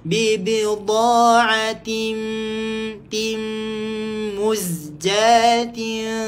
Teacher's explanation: Tanwin tak selari jumpa dengan huruf mim. Hukumnya adalah idgham ma'al guna. Masukkan dekat mim dengan dengung.